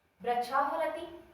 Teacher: बिल्कुल ऐसे ही हम कहें वृक्षाफलति, तो देखिए यहाँ वृक्ष के तुरंत बाद में फा आ गया है और इस फा का और विसर्ग का जो उच्चारण है वो मिश्रित हो गया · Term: उपधमानीय